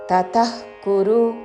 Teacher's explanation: సర్వకర్మ ఫలత్యాగన్ తతః కురు, తా తా హ్రస్వములు, విసర్గ తరువాత కాతో పదము మొదలవుతున్నది కాబట్టి నాభి నుండి శ్వాస వదులుతూ చివరిన ఖ లాగా ఉచ్చారణ.